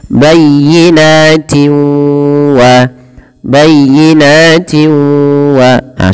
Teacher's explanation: cara membacanya memasukkan suara tanwinnya kepada huruf wau